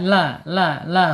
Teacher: Lam ya secara makhraj ada di alisan ya. ujung tepi lidahnya menyentuh langit-langit ya sejajar dengan gigi seri. Kemudian ee secara ee sifat yang ada di tawas ya antara tertahan suara dan mengalir suara antara asyidah dan arakhawah ya bainiah. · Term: inhiraf